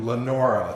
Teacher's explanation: the pronunciation of Leroy is similar to Lenora, the accent's on the second syllable